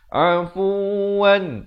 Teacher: Tekankan waw itu bersabdu. Afuwan, izhar halqi, jangan panjang. Bunyi saja wan terus masuk.